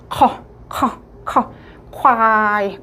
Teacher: 그리고 자 장음의 사성 이죠 커 커 커이 커이 커 커 자음에 커 같은 경우에는요 이제 성대를 조금 긁어 주는 소리가나요